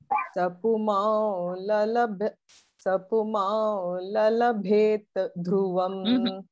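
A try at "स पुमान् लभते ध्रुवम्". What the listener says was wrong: That one is na. See, look at me. Puma labhate. Puma. The nasal na.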